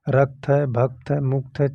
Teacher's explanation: जैसे बीच में आ गया आधा अक्षर तो जो उसके पहले वाला अक्षर होगा रा जो है वो दीर्घ हो जाएगा या गुरु हो जाएगा। तो देखिए यहाँ रक्त है तो इसके पहले रा है, तो ये देखो इसकी मात्रा दो हो गई, ताकि ये एक ही मात्रा है।